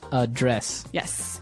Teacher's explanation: So the verb address has the stress on the second syllable.